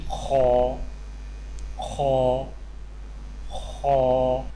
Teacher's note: خو کی ادائیگی میں زبان کی جڑ کو تالوں کی طرف بلند کرتے ہوئے موٹی آواز میں پڑھیں